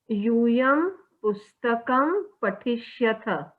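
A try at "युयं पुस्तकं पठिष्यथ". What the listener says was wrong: Shovanam.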